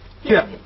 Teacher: 完全是4声，哎，八是平声嘛，后边它拉下来，所以4声